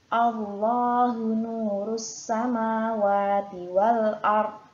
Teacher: Ya, di sini di surat An-Nur juga terdapat lafadz jalalah tadi berada di awal kalimat. Maka untuk lafadz Allahu ini harus dibaca tafkhim atau tebal ya